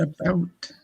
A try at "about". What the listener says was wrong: You said a boot. Now you're pronouncing it because we said something before. You said a boot. You said boot. Y'all say boot. A boot.